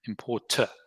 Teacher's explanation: the T is followed with a schwa, which is manifested when your tongue goes down. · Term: the British important